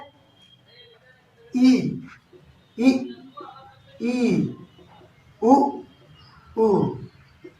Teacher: खुद देखेंगे कि हमारा मुख लगभग बंद होता है, ई, ई, ई, उ, मुंह थोड़ा सा बस हवा पास करने के लिए हो तो इनका उच्चारण संभव है। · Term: संवृत